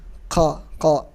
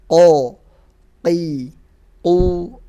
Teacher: Yang benar qaf murni tanpa ada hamsnya. Qo, qi, qu, ako, seperti itu.